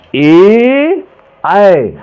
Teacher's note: कंठ एवं तालु से जो जीभ के स्पर्श से बोले जाने वर्ण कंठ तालव्य कहलाते हैं। जैसे ए और ऐ, ए ऐ, ये दोनों कंठ तालव्य के जो है स्पर्श से बोले जाते हैं, तो इन्हें कंठ तालव्य कहा जाता है।